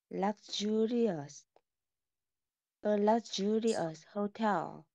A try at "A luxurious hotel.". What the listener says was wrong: Yeah. Luxurious hotel. Okay. Good.